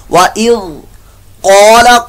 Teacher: क़ाफ पर मोटा होगा आपका, और क़ाफ की जगह अगर आपने सिंपल काला पढ़ दिया तो ये काला नहीं क़ाला है, पुर मोटा करके।